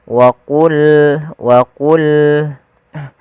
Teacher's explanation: pangkal lidah kita harus kita angkat sehingga terdengar suara qa-nya menebal. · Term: sifat huruf isti'ala